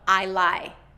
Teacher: So without that K ending sound, it sounds like I lie.